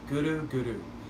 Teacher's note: And when you chant Guru, we ask you to use your tongue and to make it dance a little bit. So you'll hit the roof of the mouth and you'll roll the R. So it sounds like this, Guru, Guru.